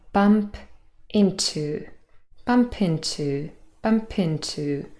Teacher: That is obviously not a word in English, but it does really sound like that because we link the p and the I together.